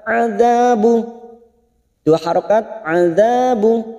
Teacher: dzanya kita panjangkan 2 harokat karena fathah bertemu alif